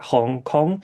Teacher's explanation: a nasalized vowel followed by a nasal consonant